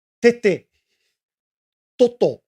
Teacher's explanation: The T is not pronounced like a European tea, as in cup of tea. It's pronounced with like an English D. You have to put your tongue behind your two front teeth.